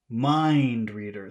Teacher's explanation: So you put all of the emphasis on the first word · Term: compound word